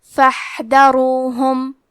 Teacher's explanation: حرف الحا کی ادائیگی حلق کے درمیان والے حصے سے ہے. کیونکہ یہاں حا ساکن ہے تو ہمیں حا کو ہمزے سے پڑھنا ہے.